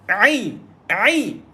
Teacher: Ain lagi. Tengah-tengah kerongkong lah.